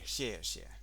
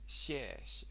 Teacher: It's fourth tone, but what you do is you say the first, when you get a repeated character like that, the first one you say the tone really clearly, and the second time you do it as a neutral tone. So it's kind of like 谢谢 rather than 谢谢.